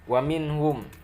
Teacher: nun mati bertemu ha itu menjadi izhar, dibacanya jelas